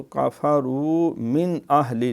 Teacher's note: یہ حروف مدہ ہے، اور واو ہے تو کفروا من اہل، نون جو ہے یہاں اظہار ہے کیونکہ نون ساکن کے بعد حمزہ